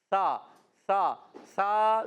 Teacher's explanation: سا کا مخرج زبان کا سرا اوپر کے دانتوں کے کنارے